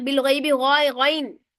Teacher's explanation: غین بھی موٹا پڑا جاتا ہے، حروف مستعلیہ میں سے ہے